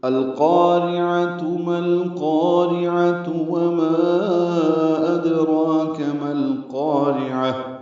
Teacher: ماں میں مد منفصل ہے، ادراک میں دال ساکن بقلقلہ، را پر کاف باریک ہے، میم کو القارعہ کے لام سے ملا دینا ہے۔